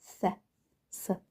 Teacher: S hərfi isə S-dır, sadəcə pəltək S-dır. Belə deyim də, pəltək S, S.